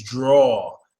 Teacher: it's a deeper a but it's not an O